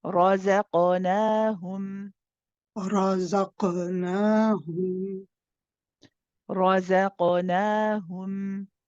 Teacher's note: qaf it has qalqala. Here, it's a bouncy letter, so we bounce it. Okay, it doesn't have a tashdeed on it, so we don't.